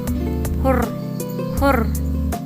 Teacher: Huruf R termasuk bunyi apikal alveolar, bersuara dan bergetar